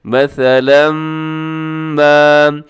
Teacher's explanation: مثلاً کے بعد ما لکھا ہوا ہے، یعنی میم آ رہا ہے، تو آپ نے یہاں پر ادغام کرنا ہے